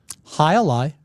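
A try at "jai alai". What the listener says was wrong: High a lie is not. It's high lie. It's not high a lie. High lie. You don't pronounce the A. You don't. It's not high a lie. It's high lie.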